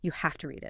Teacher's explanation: Without the V sound in have at all